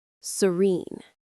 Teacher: The stress is on the second syllable, which has a long e sound.